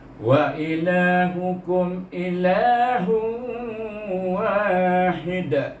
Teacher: kalau kita wakaf kita baca dia hid dengan qalqalah kubra.